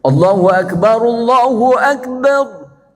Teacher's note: ro-nya kalau sukun jadi tafkhim tebel.